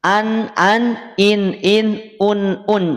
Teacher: kalau nun sukun itu berarti dibacanya jelas